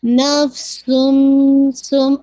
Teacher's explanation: نفسم سم، آپ نے غنہ کرنا، most complete غنہ. Sound of the نون ساکن مرج ہو جائے گی میم ساکن کے اندر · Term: ادغام کامل